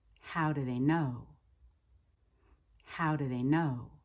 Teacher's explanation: I'm stressing how the question word and know the verb